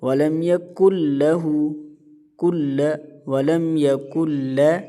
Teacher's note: یہاں پر نون ساکن ہے، نون ساکن کے بعد حرف لام آیا ہوا ہے، اور نون ساکن کے بعد حرف لام اور را میں سے کوئی بھی حرف آ جائے تو وہاں پر ادغام باللہ غنہ کا قانون ہوتا ہے، یعنی کہ وہاں پر بغیر غنہ سے سختی کے ساتھ پڑھا جاتا ہے، اور جو ساکن حرف ہوتا ہے اس کی آواز ختم ہو جاتی ہے تو یہاں پر نون ساکن کی آواز ختم ہو جائے گی، قاف اور لام کو ملا کر پڑھتے ہیں۔